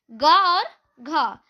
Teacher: ग और घ का उच्चारण हम लोग कंठ से करते हैं। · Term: कंठ ध्वनि